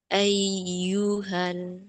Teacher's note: dia naber, menaikkan intonasi suara tapi bunyinya jangan diputus. Ayyu, jangan ayyu, eh jangan ayyu tapi ayyu Ya tetap mengalir bunyi ya-nya.